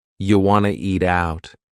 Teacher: We've dropped the question word completely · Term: reduction